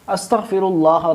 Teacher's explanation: چونکہ یہاں لفظ اللہ ہے اور اس سے پہلے والے حرف یعنی جو را ہے اس پہ پیش ہے، لہذا ہم اس کو موٹا پڑھیں گے، کیونکہ یہ ہم نے بار بار یہ قاعدہ بیان کیا ہے کہ جب لفظ اللہ سے پہلے زبر یا پیش ہو تو اس کو پھر ہم موٹا پڑھتے ہیں۔